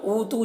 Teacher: واو مدہ ہے، سے ایک الف کے برابر کھینچیں گے